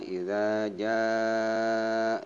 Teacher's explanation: ini matobi ini panjangnya ada tanda bendera 6 harakat sehingga dibacanya idza jaa